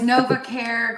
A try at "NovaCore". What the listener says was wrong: Nova Core, like hardcore, like not care.